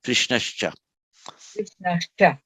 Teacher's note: Just as the Visarga followed by t becomes an s, so the Visarga followed by ch becomes a sh. It's the same point of articulation. It just comes out in the same point of pronunciation in the mouth.